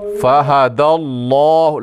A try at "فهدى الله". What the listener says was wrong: لام کو موٹا کریں،